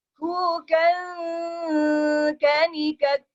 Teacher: kafnya tetap di tempat kaf, tapi bunyinya ke rongga hidung.